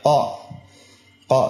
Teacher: qaf ini makhrajnya di pangkal lisan ke langit atas yang lunak